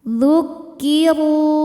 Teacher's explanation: Huruf ra dibunyikan secara tafkhim karena ra-nya berbaris di atas yaitu baris dhammah. Maka huruf ra dibunyikan dengan tebal.